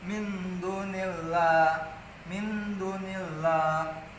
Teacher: Ikhfa itu artinya samar, artinya nun sukunnya ini disamarkan.